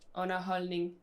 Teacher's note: So you don't pronounce the D in the holdning. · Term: silent